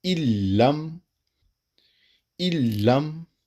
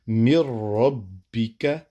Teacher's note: لام اور را میں جب ضم کریں گے تو پھر بغیر غنہ کے کریں گے، مطلب نون نہیں پڑھا جائے گا۔